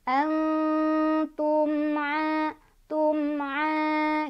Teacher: Antum'a ketemu sama ikhfa maaf izhar syafawi, sebabnya karena ada mim sukun bertemu dengan huruf izhar syafawi yaitu ain. Cara bacanya jelas, mimnya mim sukunnya dibaca jelas ya, jangan ditahan, jangan dipantul.